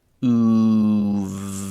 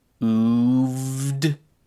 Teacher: Actually, as I pronounced this myself just a second ago, I noticed the voicing on the final d is not very strong. It's not a really hard duh, but there is some voicing there.